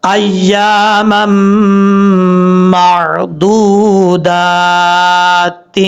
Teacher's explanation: میم کو جب میم سے کنیکٹ کریں گے بیچ میں الف کو چھوڑ دیں گے، یہاں پہ ادغام یرملون ہو رہا ہے، غنہ بھی ہوگا ایک الف کی مقدار